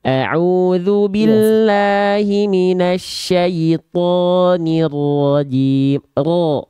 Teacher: Tinggal ditebalkan huruf ro ya. Huruf ro ketika fathah dia dibaca tebal, angkat pangkal lidahnya.